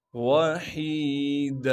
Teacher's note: ذرنی ومن خلقت وحیدا، واو کو بغیر کھینچے پڑھیں گے، ہا کو صاف کر کے گلے سے نکالیں گے